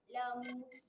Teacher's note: Huruf ain ketika mati dia tak ada lantunan ya. Okay, tahan saja bunyi dia.